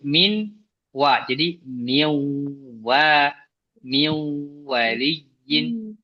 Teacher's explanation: fathatin kasatin sejajar domatin seperti angka 99 berjumpa dengan huruf wau dibaca dengan ghunah artinya dimasukkan lewat hidung suaranya ada yang lewat hidung dan dibaca huruf wunnya